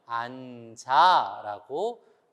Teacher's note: 아가 오면 앉아라고 지읒이 뒤로 가서 발음을 하죠. 그것을 우리가 연결해서 소리를 낸다라고 해서 연음이라고 얘기를 하는 것입니다.